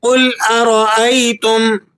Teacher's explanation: قاف کو آپ نے پر کر کے ادا کرنا ہے، را کو آپ نے موٹا پڑھنا ہے، اور میم پر آپ غنہ ادا نہیں کریں گے۔